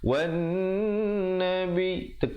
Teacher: Yang betulnya wan nabi, dengungkan dulu di atas nun, kemudian baru tekan nabi